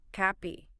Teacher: 2 syllables. The stress is on the first part.